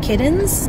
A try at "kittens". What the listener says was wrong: You have like a D sound.